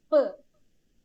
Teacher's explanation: നമ്മുടെ രണ്ട് ചുണ്ടുമാണ് ടോട്ടൽ ക്ലോസറിൽ വരുന്നത് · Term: ബൈലേബിയൽ പ്ലോസീവ്സ്